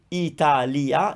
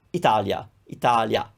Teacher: you might notice that we are kind of gliding over the I